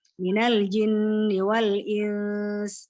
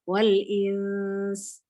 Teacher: Nun mati ketemu sin, ya ada bunyi nunnya disamarkan menuju makhrajnya sin ya. Ya ikhfa ya berarti harus dua harokat ya gunanya.